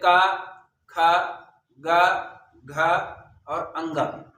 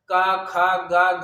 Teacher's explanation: तो इसी तरीके से क वर्ग में 5 अक्षर होते हैं, और क वर्ग के जितने भी अक्षर होते हैं वो कंठ से निकलता है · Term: कंठस्थ अक्षर